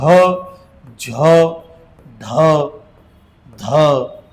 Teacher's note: हे महाप्राण आहेत यांच्या शेवटी हचा उच्चार होतो